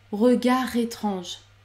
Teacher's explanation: on ne prononce pas le D, il est toujours muet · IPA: [ɛ̃.ʁə.ga.ʁe.tʁɑ̃ʒ]